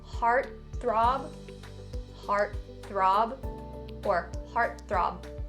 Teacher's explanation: you can either enunciate or stop the B sound at the end of this word. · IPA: /ˈhɑːrt θrɑːb/